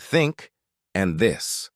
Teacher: One common difficulty is the th sound, as in words like think and this. This sound requires you to place your tongue between your teeth and blow out air while voicing the word.